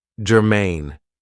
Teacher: Now, this is two syllables and the stress is on the second syllable.